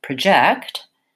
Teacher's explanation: it has second syllable stress so it's short and then long project and the vowel changes this letter o then says schwa